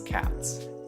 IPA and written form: kæts (cats)